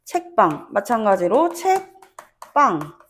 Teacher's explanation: 종성 자리도 그대로 있지만 초성 자리에 예사 소리만 된 된 소리로 발음이 된다라고